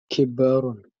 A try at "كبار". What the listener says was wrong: كبار كبار no شدة just كبار نعم كبار جنجير مسلمون